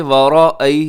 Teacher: را موٹا رکھیے گا اور اس کے بعد یائے لین ہے، نرمی سے پڑھیے گا۔